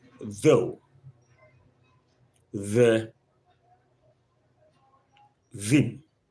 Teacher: Then we have the voice dental fricative.